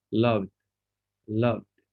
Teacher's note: ed is going to be pronounced like a d after a voiced sound